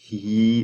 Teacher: When you say e, you are going to feel the tongue rising in the front